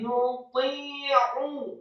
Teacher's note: lidahnya di langit-langit atas seperti ada tarikan. Nuti, jangan muti, tapi nuti'u.